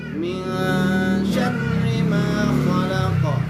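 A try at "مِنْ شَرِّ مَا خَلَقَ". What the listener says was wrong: Kho-nya pastiin kho. Bukan ho, bukan holak tapi khalaq.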